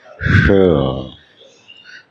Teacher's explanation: मूर्धन्य स का उच्चारण होता है श